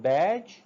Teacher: The air is blocked with the tongue just behind the alveolar ridge and then released as a fricative. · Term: ja sound